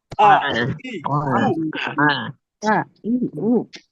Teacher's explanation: আ না এটা ধাক্কার মতন হালকা আ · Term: হামজা